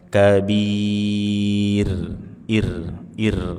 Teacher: Rnya kita sukunkan kita baca dengan tarqik tipis karena sebelumnya sukun sebelumnya kasrah. ir bantu sedikit senyum untuk menyempurnakan ketipisannya. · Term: tarqiq tipis